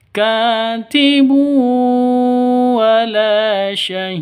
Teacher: Wala yudarra katibu. Katibu, ka panjang 2 ketukan, ada alif diawali dengan fathah mad asli